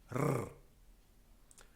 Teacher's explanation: a broken sound of vibrating beats of the tongue on the pallet which is a trilled sound